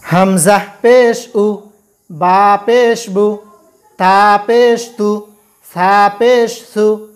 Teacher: পেশের আওয়াজ সাধারণত একটু সামনের দিকে যায় ও উচ্চারণের সময় ঠোঁট গোল হয়।